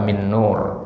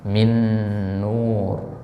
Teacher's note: Nun yang pertama itu sudah melebur kepada Nun yang kedua ya Min Nur ya Min bunyi R di situ bukan Nun